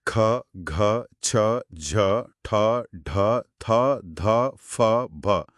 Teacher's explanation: ಹಕಾರ ಸೇರಿ ಉಚ್ಚರಿಸುವ ಧ್ವನಿಗಳು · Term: ಮಹಾಪ್ರಾಣ ವ್ಯಂಜನಗಳು